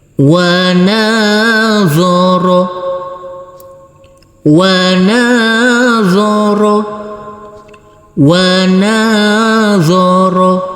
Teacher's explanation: Di sini huruf wawu kita baca pendek, huruf nun kita baca panjang dengan panjang 2 harokat. Karena setelah huruf nun ini ada huruf alif yang tidak berharokat.